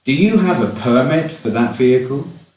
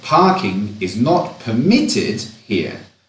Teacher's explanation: permit with the stress on the first syllable is a noun. Permit with the stress on the second syllable is a verb.